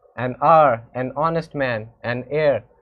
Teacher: the word hour, honest, heir begin with a vowel sound as the initial consonant. H is not pronounced.